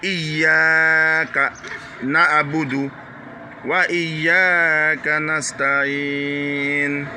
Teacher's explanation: Ça veut dire cette syllabe là, non seulement le Y doit être dur, mais le A aussi doit être une voyelle longue